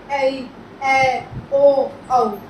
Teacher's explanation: दीर्घ स्वर उन्हें कहते हैं जिन स्वरों का उच्चारण करते समय हमें ह्रस्व स्वर से दुगना समय लगे